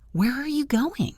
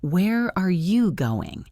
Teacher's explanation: What questions who, what, where, when, why, how actually go down at the end. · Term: falling intonation